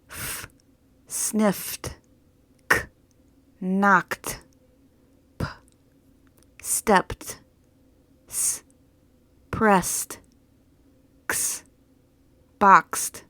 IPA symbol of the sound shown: t